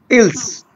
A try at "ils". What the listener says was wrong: Acha, for this time, for the being time, we do not pronounce like S. So although they will be pronouncing in further whenever they comes with articles or no, or like with vowels, but अभी pronounce नहीं होगा. तो आपने वैसे ही पढ़ना है जैसे ऊपर वाले पढ़े थे.